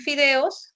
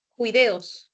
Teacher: alternancia consonántica entre el sonido de la F, la fricativa labiodental sorda, con la fricativa velar sorda